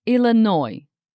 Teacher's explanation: The French explorers changed the spelling and pronunciation. So now we have Illinois with a silent S.